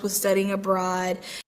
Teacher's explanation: studying abroad 하면서 둘 다 강세를 주고 있어요